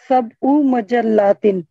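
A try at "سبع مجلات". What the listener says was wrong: very good,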